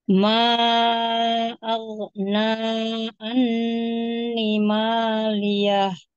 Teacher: pada nun yang bertasydid itu gunahnya atau dengungnya tahan dia tingkatannya paling sempurna. Jadi jangan buru-buru.